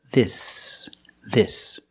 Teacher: the S is a true S. There's no voice, there's no vibration. S together, this, this.